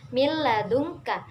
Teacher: lam dan rok contoh dari Idgham bilaghunah ialah yang pertama milladunka disitu ada nun mati bertemu dengan huruf lam maka dibaca tanpa dengung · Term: idgham bila gunnah